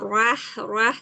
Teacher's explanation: Jangan terlalu terbuka ya ronya rah rah jangan ro aja.